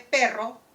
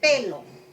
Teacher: Por ejemplo, si el niño dice, si la palabra es perro, el niño dice pelo, ¿cierto? La R lo ha reemplazado, lo ha sustituido por otro fonema que es L.